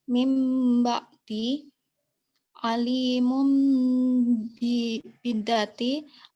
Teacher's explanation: terjadi apabila nun mati atau tanwin bertemu dengan huruf ba maka nun sukun atau tanwin dirubah pengucapannya pada huruf mim yang diucapkan dengan dengung dan disamarkan dua harokat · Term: iqlab